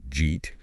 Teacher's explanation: That did sound and then the y sound just sort of fuse. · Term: connected speech